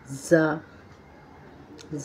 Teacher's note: ज़बान की नोक को नीचे के दो दांतों के किनारे लगाकर अदा होता है ज़ा की आवाज़ सख्त होती है